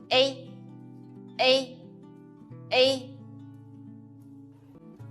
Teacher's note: pronounce uh first and put your tongue forward then pronounce e quickly without Gap you can feel your tongue is upward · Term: the final a